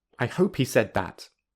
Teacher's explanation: the second that has the full vowel instead of the reduced vowel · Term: strong form